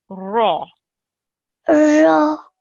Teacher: ra with a fatha is a thick sound. So we have to have a rounded mouth when we say it.